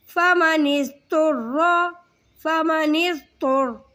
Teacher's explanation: ضاد کو موٹا کر کے پڑھیں گے اور طا کو بھی موٹا کر کے پڑھیں گے، لیکن دھیان رکھیں گے نون کو ضاد کے ساتھ ملا رہے ہیں تو سختی کے ساتھ سیٹی نہ ہو اس میں، ٹھیک ہے۔